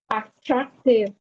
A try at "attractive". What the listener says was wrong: Now, it should be down at the end of the word. Attractive. All right, the final sound, push it down. Attractive.